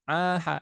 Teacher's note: di tengah tenggorokan ya kamar tengah ada Ain dan Ha